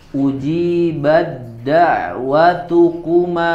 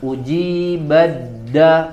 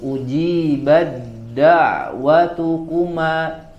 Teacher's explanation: Itu ada huruf ta sukun, langsung diidghamkan kepada huruf dal karena satu makhraj.